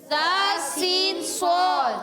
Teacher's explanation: سبیلا سین سیٹی کے ساتھ ادا ہوگا. زبان کی بالکل باریک نوک اصلت اللسان اور دونوں دانتوں کے اندرونی کنارے.